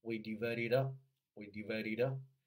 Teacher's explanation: 第一个是连读辅音加元音